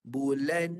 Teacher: Suara yang ditekan di rongga hidung. Dengan panjang kadar 2 harakat. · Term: gunnah